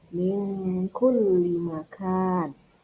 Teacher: Terus yang kedua, ini ada nun sukun bertemu dengan huruf kaf, maka nun sukun atau tamwin, nun sukunnya dibaca seperti ang, ya. Min kulli makan. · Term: ikhfa hakiki